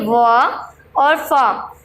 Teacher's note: व और फ नीचे के होठ और ऊपर का दांत होता है।